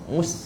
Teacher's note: kita nak angin sin keluar dalam keadaan dia nipis. Jadi kita senyum.